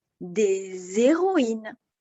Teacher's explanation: Ici, le H est muet, on fait la liaison normalement.